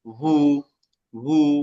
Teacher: ওয়াও পেশ উ হ্যাঁ, ঠোঁট না লাগে, হ্যাঁ, ঠোঁট না লাগে, ঠোঁট লাগলে বা হয়ে যাবে।